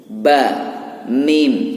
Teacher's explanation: mim dan ba ini keluarnya dari dua bibir. Huruf ba ini keluarnya dari dua bibir. · Mim juga dua bibir atas bawah harus gatuk